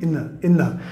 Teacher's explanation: TH después de N. A veces lo vas a escuchar como un TH sonora muy sutil, in the. A veces va a sonar como una D o una R suave y a veces nada.